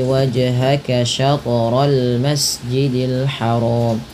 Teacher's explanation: Wajhaka dan syatra pantulkan kedua-duanya karena ia bacaan qalqalah. Kesalahan yang terjadi kalau baca qalqalah tadi sudah kami sebutkan, yaitu ketika adanya huruf qalqalah jim, ta, dal, ba, kemudian qaf gitu ya, maka dia wajib dipantulkan.